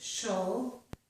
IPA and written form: ʃəl (cial)